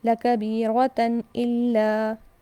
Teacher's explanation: اس کے بعد ہے لَكَبِيرَةً إِلَّا، تنوین کے بعد حمزہ، یہاں پر اظہار ہوگا، یا نہ تو ہم غنہ کریں گے، نہ ہم رکیں گے، نہ اخفا